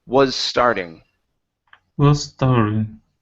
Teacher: So combine these two S sounds.